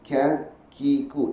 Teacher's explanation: dia bawa ke atas langit-langit atas dia dipanggilkan langit-langit keras sebelah atas berdekatan dengan makhraj syim Jim dan ya tengah-tengah dia ke dalam · Kemudian pada pangkal lidah diangkat ke atas bahagian bawah iaitu keluar daripadanya huruf Kaf